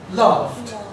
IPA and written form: lɑːft (laughed)